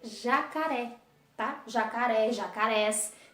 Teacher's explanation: jacarés será acentuado última sílaba mais forte e acentuada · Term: oxítonas